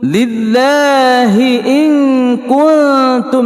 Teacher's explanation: nun sukun bertemu dengan kaf, hukumnya ikhfa hakiki sughra berdengung 2 harakah